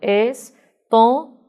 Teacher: Porém, se eu contar da última até o final, eu contando de trás para frente, então eu tenho go é oxítona, ma é a paroxítona, to é a proparoxítona. Veja que esse to é a nossa sílaba tônica. E perceba que esse O é fechado